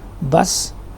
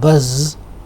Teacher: the last sound in bus is s sound, voiceless. In buzz is z sound, which is voiced.